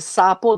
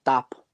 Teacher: pues en la s está siendo convertido en una oclusiva